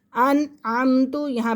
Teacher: اسرائیل اذکروا، لام زال زبر لز، لذکروا نعمتی التی، چھوٹا مد ہے کیونکہ حمزہ دوسرے کلمے میں ہے، نعمتی التی انعمت، انعمت، یہاں پہ غنہ ہم نہیں کریں گے، نون ساکن کے بعد عین ہے، عین حروف حلقی میں سے ہے۔